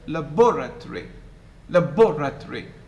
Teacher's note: So the O, the vowel, the nucleus in the second syllable is clearly pronounced.